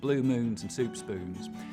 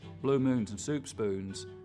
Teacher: Now, one thing that sets a lot of Texans apart from other Southerners is that there's a lot less goose fronting. So the tongue stays further back through that whole vowel sound instead of coming forwards.